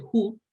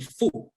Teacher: en el caso del japonés, hu es una pronunciación bilabial, o sea, digamos, el aire pasa entre los dos labios, ¿no? Mientras que en español esa F es labio dental y, por tanto, tendemos a decir fu, cuando en realidad en japonés no se puede pronunciar así o no se debería pronunciar así.